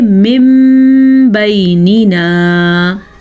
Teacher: ہونٹ بند ہو جائیں گے اور غننے کی کنڈیشن پیدا ہوگی تو آپ اقلاب کا قاعدہ خود بخود ادا کر دیں گے.